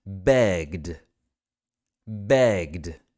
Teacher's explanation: the root word is beg that's voice isn't it beg so we are adding a D sound to the end of that this is voiced